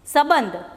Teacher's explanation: સંબંધ બોલો એટલે અહીંયા મ બોલાય છે. સંબંધ ગુજરાતીમાં પણ મ જ બોલાય છે.